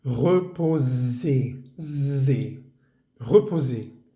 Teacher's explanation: En la palabra reposer encontramos esa S entre dos vocales. Vamos a tratar de hacerla vibrar.